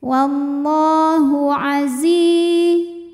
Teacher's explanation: lam berbaris fathah panjang, maka lam panjang 2 harokat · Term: mad tabi'i muqaddar